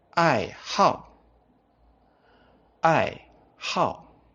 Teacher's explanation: in this meaning we don't pronounce the word as how instead we pronounce it as how how it becomes the fourth tone